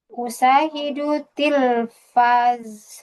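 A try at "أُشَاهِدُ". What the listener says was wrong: Usyahidu. Itu pakai shin ya, Ukti. Sya. Usyahid.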